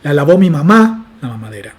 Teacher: Yo lo que hago es tomar un constituyente y moverlo incluso más a la derecha todavía, a una posición que ya está fuera de mi cómputo para asignar el acento nuclear. Entonces este elemento que aparece más a la derecha se pronuncia ligeramente desacentuado